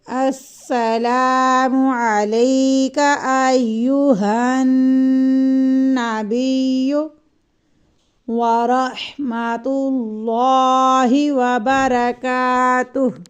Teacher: سین میں سیٹی کی آواز آئے اور سین کو سختی سے پڑھیں گے، السلام نہیں پڑھیں گے، سین میں تشدد ہے، اور اس کو جنبش کے ساتھ پڑھیں گے۔